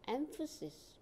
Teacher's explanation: Here, the stress is on first syllable, M. Emphasis.